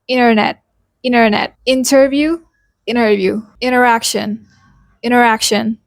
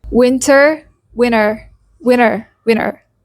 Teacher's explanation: another personality of the T sound is that the T disappears completely in fast speech